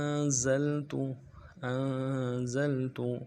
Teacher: حمزہ کو نون ساکن کے سامنے لانا ہے، نون ساکن ہے غنہ کریں گے